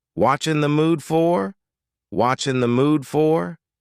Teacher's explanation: The word are is gone, and the word you has been reduced to ya.